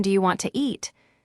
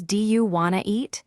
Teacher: Sometimes, sounds are dropped like the T in want to.